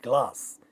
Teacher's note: when we speak, we do not find any vowel quality in g when we are saying glass, and when there is a cluster, only if it is a cluster of 2 consonant sounds, only the first one is losing the vowel quality.